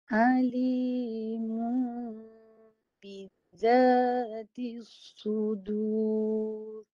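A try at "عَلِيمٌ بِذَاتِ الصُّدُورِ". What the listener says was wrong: Yang tu mimnya dua-dua masuk hidung tu. Mim baris depan mu dah sengau dah. Mu mulut dulu. Mu. Lepas mu baru sengau kan. Mu. Dia ada dua bunyi tu. Satu mu, satu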